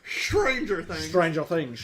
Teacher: an SH sound instead of ST on Stranger Things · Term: Sean Connery voice